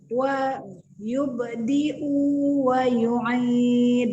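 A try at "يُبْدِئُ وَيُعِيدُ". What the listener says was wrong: Nah, sekarang udah benar, tapi u-nya jangan panjang-panjang, 1 harokat saja. Yubdi'u wa yu'id.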